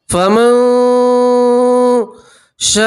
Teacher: نون سکین کی آواز کو آپ ناک میں چھپائیں گے, ایک اور ایک الف کے برابر گنہ کریں گے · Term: نون سکین کا اکفا